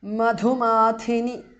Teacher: Dha is mahapranah and mathini tha is mahapranah, and the e in the end is short there.